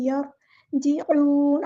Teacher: ऐन को मुस्तहलक यानी middle throat से अदा करना है